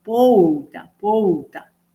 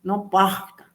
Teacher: En San Pablo se le escucha que dicen pouta, pouta, no porta, sino pouta.